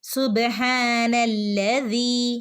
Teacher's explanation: ചെയ്തു ഈ നൂനിനെ ഈ നൂനിനെ നേരെ ലാമിലേക്ക് അങ്ങ് ജോയിൻ ആക്കി സുബ്ഹാനല്ലി ലാമിന് ശ്രദ്ധയുണ്ട് ട്ടോ ഒന്ന് കനപ്പിക്കണം ട്ടോ